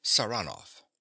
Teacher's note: He pronounces the name with a stress on the second syllable.